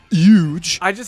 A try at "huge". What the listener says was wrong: you don't know how to pronounce h's i think you're just too lazy to say it honestly